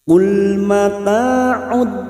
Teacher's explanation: Qul mata'ud lam sukun jangan sampai memantul ya